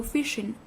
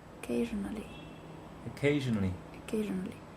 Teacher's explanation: So same place, but one is sh, and the one is zh.